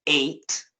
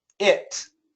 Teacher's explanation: So when we have ATE at the end of a word, we have two pronunciation possibilities. One possibility is ate, and the other possibility is it. Or we could even have a schwa, ut is possible too. The rule, and rules are made to be broken, but generally only when it's a verb do we say ate.